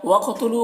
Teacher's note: क़ाफ को पुर पढ़ेंगे, हुरूफ़ मुस्तालिया में से है और क़ाफ में कलकला होगा। तुलू में वाव मद्दा है।